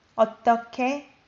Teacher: it's pronounced as K sound when H and G are combined.